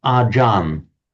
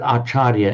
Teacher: So in Thai, what they do, they often drop off the final syllable, so it becomes achar. If a Thai word ends in a r, that morphs into an n, and an intervocalic ch becomes a j. That's how it doesn't look like it on the face of it, but acharya, in Sanskrit acharya, in Pali acharya, becomes ajan in the Thai pronunciation.